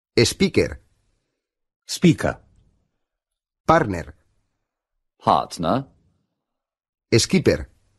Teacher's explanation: en inglés se tiende a hacer desaparecer la erre final